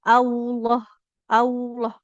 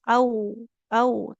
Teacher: Jadi tidak maju bibirnya. Lamnya tebal tapi tidak membuat bibir kita jadi maju ya.